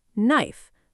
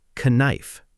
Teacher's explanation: When K comes before N at the start of a word, the K is silent. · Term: silent K